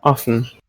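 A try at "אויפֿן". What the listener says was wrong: Offen. Sounds like a monophthong now.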